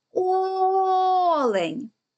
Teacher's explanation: який звук ми протягали найдовше о Тобто це перший склад і він є наголошеним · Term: наголос